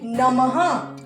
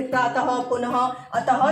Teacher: और इसको बोलने के बाद जब बोलते हैं तो पीछे से ह की आवाज आती है। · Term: विसर्ग